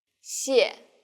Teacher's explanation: Yeah. The tone in the first syllable is the fourth falling tone, 谢. and the second syllable is the neutral tone.